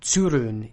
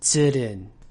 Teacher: the vowel sound represented by the letter U in Japanese is actually an open vowel so you don't round your lips whenever you're pronouncing it